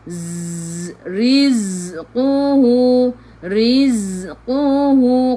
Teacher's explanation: Ra baca dengan nipis, ra baris bawah taraqiq. Kelas huruf zai, sifat hurufnya safir, kena bunyikan z, macam bunyi lebah.